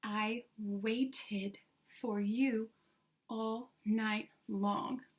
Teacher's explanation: it ends in a T so we would add the I D sound